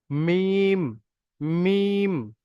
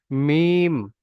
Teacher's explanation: দুই ঠোঁটের শুকনো অংশ সামনের দিকে হচ্ছে